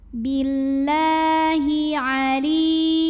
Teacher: Cara membacanya dipanjangkan lamnya 2 harokat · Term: mad tabi'i muqaddar